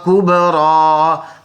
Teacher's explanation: با میں قلقلہ ہوگا، را کو پر پڑھیں گے، را کے اوپر کھڑی زبر ہے، وقف میں کوئی چینج نہیں، یا سائلنٹ کیونکہ یا پر کچھ نہیں ہے۔